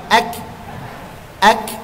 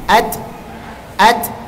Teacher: Kita tekan huruf kaf, ak, akan keluar nafasnya dengan sendiri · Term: hames